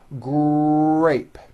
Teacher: the r sound is the strongest sound of the blend and your lips often come forward before you even say the word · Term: R Blends